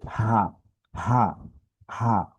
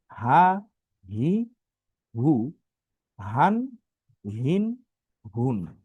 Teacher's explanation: হলকের বা কণ্ঠের শুরু থেকে উচ্চারণ হয়, গলার ভিতর থেকে।